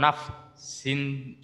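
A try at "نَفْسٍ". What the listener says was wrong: নাফসিন, সিন যেন টান না হয়, বিগয়রি নাফসিন।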